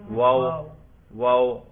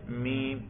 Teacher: شفتن ہونٹ کو کہتے ہیں، اور واو بھی ہونٹوں سے ادا ہوتا ہے، میم بھی ہونٹوں سے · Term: شفوی